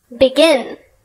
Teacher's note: the emphasis or strength on the last syllable in the case of begin the stress is indeed on the last syllable